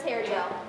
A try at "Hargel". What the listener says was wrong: How many times do I have to tell you people that the I is silent? It's Hargel. Please, just get it right.